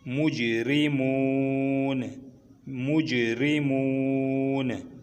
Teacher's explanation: आगे वक़फ़ आ गई तो नून साकिन हो जाएगी